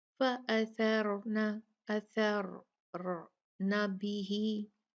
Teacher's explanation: फर्क सिर्फ इतना हुआ कि ये सारा रूल जो उसके ऊपर हमने देखा था, वो क्योंकि वो रा साकिन हो गया तो वो सारे रूल्स उससे पहले वाले लेटर पे देखे जाएंगे। यहाँ पर सा है तो उसके ऊपर जबर है, फतहा है, तो रा हैवी पढ़ी जाएगी। फ़अथरना, अथरना बिही।